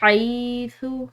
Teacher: ہا کو ہم نے ایک الف کی مقدار لمبا ادا کرنا ہے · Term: باریک ہا